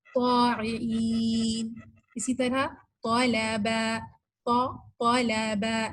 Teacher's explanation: آپ نے ہونٹوں کو گول کر کے ان کو ادا نہیں کرنا, آپ نے کوشش یہ کرنی ہے کہ آپ کی جو زبان یعنی بیک آف دا ٹنگ ہے وہ اوپر کے تالو سے جا کے لگے